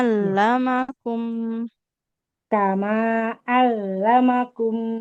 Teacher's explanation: Alamakum bukan alamakum. Yang ditasdidkan itu huruf lam, bukan mim.